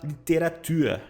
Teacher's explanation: Usa o R na ponta da língua